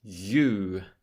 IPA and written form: jˈuː (you)